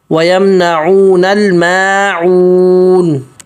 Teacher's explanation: مد ہے وَيَمْنَعُونَ الْمَاعُونَ میم پتلا آگے عون عین نکالنا ہے واو مد ہے ایک الف مد کے برابر مد کرنا اور نون واضح